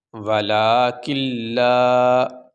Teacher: اس نون کو اس لام میں ہم نے داخل کر دیا ہے، اس نون کو لام بنا کے اس لام میں داخل کر دیا۔ اب یہ یہاں پہ نون نہیں پڑھا جائے گا، یہ لام ہی پڑھا جائے گا۔